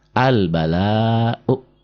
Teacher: U-nya juga nggak dibaca, A-nya nggak panjang.